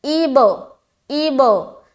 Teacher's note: بے ساؤنڈ جو نیچے کی طرف جاتی ہے نا وہ غلط ہے, ہمیشہ اوپر کو کھلے گی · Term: قلقلہ